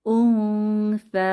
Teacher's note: নুন সাকিনের পরে সা হরফটি এসেছে, ইখফার হরফ। তো এখানে আমরা গোপন করব বা ইখফা করে পড়ব